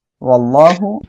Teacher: [music] মুহিতাল্লাহুম ওকে দেখেন এখানে আমরা এক আলিফ টেনে পড়বো আর আল্লাহ শব্দের লামের ডাইনে জবর আসছে মোটা করে পড়বো